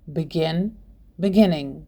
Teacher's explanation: the stress falls on the last syllable for example begin beginning the verb begin has two syllables and the last syllable is stressed · The verb begin has two syllables and the last syllable is stressed, so we double the final consonant n before adding ing.